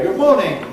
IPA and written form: ˈgʊb ˈmɔːnɪŋ (good morning)